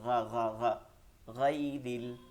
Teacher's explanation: পরবর্তী আয়াত ইয়া জবর গাই র লাম জের রিল গাই রিল গাইনটা মনে আছে আমাদেরকে বেশি শক্ত করা যাবে না একটু নরম থাকবে